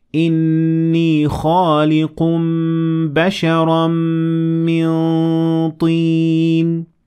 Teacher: my mouth is looking like I'm saying the ta sound, but I'm letting the air through the nasal cavity. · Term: ikhfa